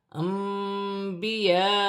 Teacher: نون ساکن کے بعد با رہی ہے، یہاں پر چھوٹی سی میم لکھی ہوئی ہے، نون ساکن کی آواز کو میم سے بدل کر غنے کے ساتھ ادا کیا جائے گا، اسے اقلاب کا قاعدہ کہتے ہیں۔